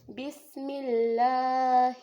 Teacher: بسم اللہ، دیکھیں یہاں پر کیا ہے، یہاں پر سین میں سٹی کی آواز نکالنی ہے، اور دیکھیں اللہ سے پہلے کیا ہے، زیر، تو ہم نے اللہ حرف کو کیا کرنا ہے، باریک ادا کرنا ہے۔ تو اللہ اور لام کے اوپر کیا ہے، کھڑی زبر، تو ہم نے یہاں پر ایک الف کے برابر لمبا کرنا ہے، جیسے کہ الف مدہ کو لمبا کیا جاتا ہے۔